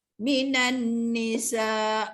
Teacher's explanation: dengung yang keluar pada mim dan nun yang berbaris amat sedikit sekali. Walau bagaimanapun masih ada suara dengung yang keluar daripada huruf-huruf ini.